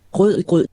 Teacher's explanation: A dramatic change worth its own story, the so-called guttural r. Instead of a front-of-the-tongue trill r, it's a back-of-the-mouth r.